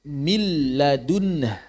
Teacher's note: Maka membaca lafal min ladun itu menjadi mil ladun. Nunnya tidak ada sama sekali. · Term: idgham